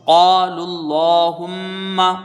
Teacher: لام میں کھڑا زبر ہے، اس کو کھینچ کے پڑھیں گے، یہ لام پر کر کے پڑھا جائے گا